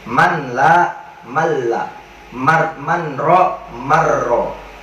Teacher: Maka di hukum idgham bila gunnah, definisinya, pengertiannya adalah apabila ada nun mati atau tanwin bertemu dengan huruf lam dan ro, maka nun mati atau tanwinnya dihilangkan dan dimasukkan langsung ke dalam kedua huruf tersebut, yaitu lam dan ro